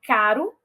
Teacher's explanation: e o r fraco o r fraco é aquele tep então o tep ele ocorre em posição intervocálica ou seja entre vogais · o TEP ele ocorre em posição intervocálica, ou seja, entre vogais, como em caro, e ele não apresenta nenhum tipo de variação.